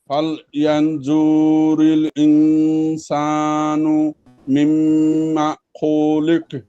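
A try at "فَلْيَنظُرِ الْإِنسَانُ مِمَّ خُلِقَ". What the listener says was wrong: এই যে জুরিল, এখানে টান হচ্ছে, টানটা হবে না। জুরিল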